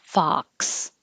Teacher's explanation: The vowel is ah. So open, ah